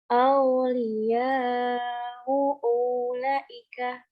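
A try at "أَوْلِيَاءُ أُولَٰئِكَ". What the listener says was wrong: Punya pendek, bukan? Punya pendek.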